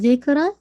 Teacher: जाल twice hit होगा इंशाल्लाह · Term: शद्दा